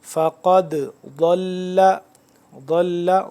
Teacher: قاف کو موٹا ہی پڑھیں گے